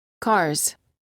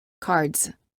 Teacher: The first word contains just a Z sound, and the second word contains a D and a Z sound.